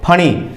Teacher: दोनों होठ मिलेंगे और अलग हो जाएंगे